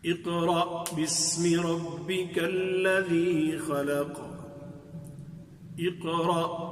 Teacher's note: حمزہ کو باریک پڑھیں گے، حمزہ کے نیچے زیر بھی ہے تو ویسے بھی حمزہ کو ذرا قوت کے ساتھ ادا کرنا ہوتا ہے. تو اقرأ قاف، اقرأ قاف ساکن ہے، تو یہاں قاف جو کہ موٹی قاف ہے، قل والی قاف ہے، تو قرآن والی قاف ہے، تو اس کو بھی تفخیم کے ساتھ موٹا کر کے پڑھیں گے.